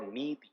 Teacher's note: you can actually figure out that the E after Na is long, and the E after Ta is short